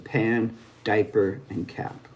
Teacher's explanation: This is the voiceless counterpart of the B.